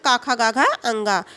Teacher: कंठ और निचली जीभ के स्पर्श से बोले जाने वाली